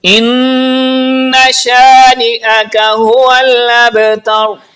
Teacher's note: یہاں پر جو را ہے یہ بھی پر پڑھی جائے گی، یعنی را ساکن ہے اس سے پہلے زبر ہے، اس لیے را کو پر پڑھیں گے